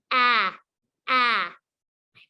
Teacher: A says ah, ah. My mouth is nice and wide. My tongue is flat. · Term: short vowel sounds